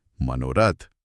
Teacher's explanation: मनः बोलते समय जो हवा गले से निकली वो तुरंत बाद आने वाले र से टकराई। र बोलते समय जीभ मुड़ती है, जिसके कारण हवा को बाहर निकलने के लिए होठों को गोल करना पड़ता है और वो हवा ओ की ध्वनि में बदल जाती है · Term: विसर्ग